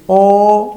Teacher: mismo ángulo de abertura Pero cuando la lengua retrocede tienes o retrocede hacia el velo del paladar